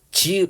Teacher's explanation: 그래서 지 발음해 보면 드 발음해 보고 지 발음해 보면 지 발음할 때가 좀 혓바닥 가운데하고 단단한 입천장 쪽이구나